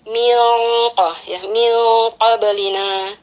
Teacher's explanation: Sedikit berbeda dengan huruf kaf ya. Qaf ini bersifat isti'ala, jadi kita baca dengungannya itu dengan penebalan suara juga. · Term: ikhfa hakiki